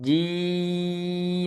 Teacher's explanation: Nah, ini ketika panjang jiim. Nah, im ini enggak boleh masuk hidung ya selama panjangnya itu